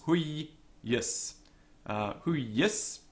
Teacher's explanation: Huius, it's got a tense first syllable, or a heavy syllable. It's a short vowel, but it is tense.